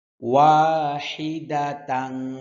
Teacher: ওয়া বললে ঠোঁট গোল হবে ঠোঁট গোল হয়ে তারপর ছেড়ে দেবেন ঠোঁট প্রথমে গোল হবে তার তারপর ঠোঁট যেভাবে থাকতে চায় ঠোঁটের